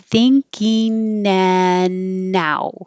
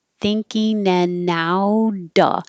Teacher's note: you can't make a connection if your tongue is in the back making the perfect ing, like sing and ring. So change it to an een with the tongue in the front. And then enan can connect to the and you don't have to say the d in and.